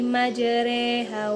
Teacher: mencondongkan bacaan harkat fathah pada harkat kisrah sekitar 2/3-nya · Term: imalah